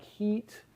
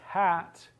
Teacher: So we talk about the high vowel like heat and the low vowel like hat